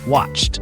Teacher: your vocal cords don't vibrate for example take the word watch when you say CH like at the end of watch your throat is silent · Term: unvoiced sound